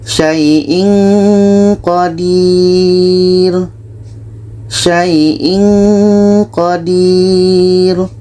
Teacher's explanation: bertemu Q ini Ikfa Hakiki kita baca Sin Qodir saiin Qadir ketika kita baca tanwin kita sudah merasakan huruf qo maka seperti ada bunyi Eng bunyi Eng saiin Qadir contoh untuk Nun dalam surah Ali Imran